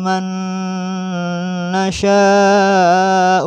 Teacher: Di sini ada juga nun mati bertemu nun. maka memasukkan suara nun mati pada nun disertai dengan dengung